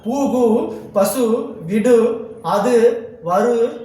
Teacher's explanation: வல்லின அல்லாத உகரங்கள் எப்போதும் முழுமையாகவே ஒலிக்கும். இவ்வாறு ஓசை குறையாமல் ஒரு மாத்திரை அளவில் முழுமையாக ஒலிப்பதை முற்றிலுகரம்னு சொல்றாங்க